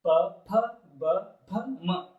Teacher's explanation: ತುಟಿಗಳ ಸಹಾಯದಿಂದ ಉಚ್ಚಾರಗೊಳ್ಳುವುದರಿಂದ ಇದಕ್ಕೆ ನಾವೇನಂತ ಕರಿತೇವೆ ಅಂದ್ರೆ ಓಷ್ಠ್ಯ ಅಕ್ಷರಗಳು ಅಂತ ಕರಿತೇವೆ · ಪ ವರ್ಗದ 5 ಅಕ್ಷರಗಳು ಎಲ್ಲಿ ಹುಡ್ತಾವಂದ್ರೆ ಅವು ಹುಟ್ಟುವಂತಹ ಜಾಗ ಯಾವುದು ಅಂದ್ರೆ ಅದು ತುಟಿಗಳು.